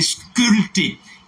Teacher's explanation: Pour la graphie, il y a un P. Mais pour la phonétique, la prononciation, le P ne se prononce pas. C'est un P insonore.